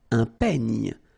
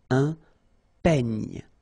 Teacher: Final E, you don't insist on it. It's ny, the last sound.